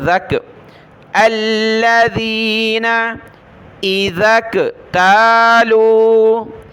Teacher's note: یہ ذال کو آگے کاف کے ساتھ ملانا ہوتا ہے، ذال کاف زبر ذک، الذین اذا اکتالوا، اذا اکتالوا علی الناس یستوفون۔